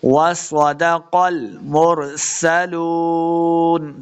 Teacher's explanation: सीन पे सीटी की आवाज़ आएगी।